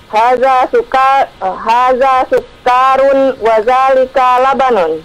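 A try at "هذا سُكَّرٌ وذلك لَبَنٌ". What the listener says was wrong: Sukarun, kafnya jangan dipanjangkan. Sukarun. Sukarun.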